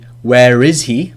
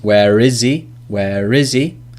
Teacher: So we can link where, because that ends in an R sound in most pronunciations.